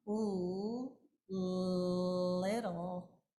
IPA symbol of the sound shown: l